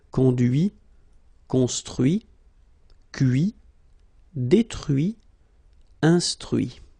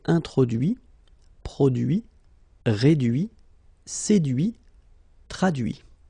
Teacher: even if I put this final T, so as usual, I don't pronounce it